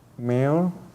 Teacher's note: Ya no es un sonido lateral alveolar, sino es un sonido velar. Un sonido pesado, oscuro y velarizado.